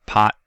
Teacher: you can produce that without releasing the t sound at the end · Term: unreleased stops, Unreleased stops